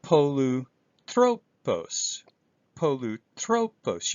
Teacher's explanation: And here's an acute accent, polutropos, polutropos. You can hear my voice go up with the omicron.